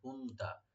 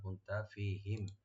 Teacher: নুন এখানে ইখফা হবে, লাইট গুন্না, কুনতা ফিহিম, ফিহিম, ফি একালে টানবেন, আর হিম মিম সাকিন এখানে ইজহার করবেন, ফিহিম।